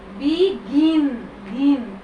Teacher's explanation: এই গিনে জোর, বিগিন জোর হয়